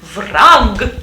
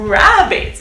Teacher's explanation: Rabbits don't use the post-alveolar trill as we do in Russian, which is okay in Russian, as in vrag, but use the post-alveolar approximant.